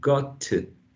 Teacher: Got to, and then we sort of we don't release the first T, got, and then we sort of make an emphasis on the initial sound of the preposition to, got to. But it's not like we elide the consonant in got, the final consonant sound in got, but it's an unreleased form, so it's still there.